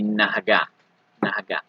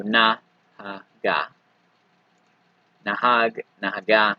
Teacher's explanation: It should be a slightly shorter ah sound, but in a lot of cases you don't really hear a difference.